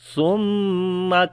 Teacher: سا کو نرم پڑھیں گے، میم کے اوپر شد ہے، غنہ کریں گے، ثم اور لمبا بھی کرتے ہیں۔